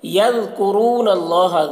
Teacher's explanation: ذال کو باریک پڑھیں گے اور ذال میں قلقلہ نہ ہونے پائے اس کا خیال رکھنا ہے۔ کرو، را کو پر پڑھنا ہے اور یہاں پر واو ساکن سے پہلے پیش ہے تو واو مدہ ہے، اسے ایک الف کے برابر کھینچ کر پڑھیں گے۔